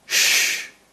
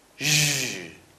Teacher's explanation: Again, very similar sounds, same place, same manner of articulation. The only difference is that one is voiced while the other is not.